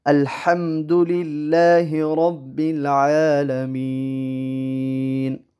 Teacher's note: اور الحمد میں دال کا جو ضمہ ہے اس کو نہیں کھینچنا، اسی طرح للہ میں جو کسرہ ہے اس کو نہیں کھینچنا